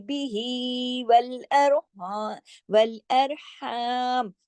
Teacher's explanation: और सुगरा कहते हैं छोटी मद को, छोटी सी मद है, दो हरकत खींचेगी, बिही वल अरहम, वल अरहम। ये हा जो है सांस के साथ गले से पढ़ा जाएगा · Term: मद्दे सिला सुगरा